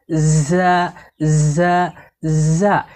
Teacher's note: জিহ্বার আগা সামনের নিচের দুই দাঁতের গোড়ার সঙ্গে লাগিয়ে শীষ সহ পড়তে হয়। যেমন ঝা ঝা ঝা।